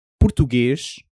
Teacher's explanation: At the end of a word or before certain consonants, that s softens into something closer to sh. So, português doesn't end in an s sound, not really. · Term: the European s, European S